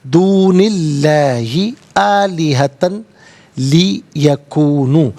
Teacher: آلیہتن میں تا پر دو زبر کی تنوین ہے، اسے لی یکونو کی لام کے ساتھ ملائیں گے، لام کی آواز کو ادا کیا جائے گا ، یہاں پر یرملون کا قاعدہ اپلائی ہوگا، آلیہتن لی یکونو · اللہ کے حرف لام سے پہلے والے حرف نون کے نیچے زیر ہے، تو اس میں اللہ کے حرف لام کو باریک کر کے پڑھیں گے